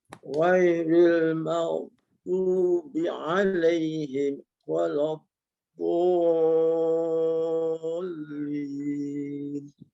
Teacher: ada huruf dad, ada sifat tebalnya, tapi sayap tu belum kembang. Lidah kiri kanan itu saya boleh rasalah dia belum kembang dan menyentuh bahagian gigi atas kiri dan kanan.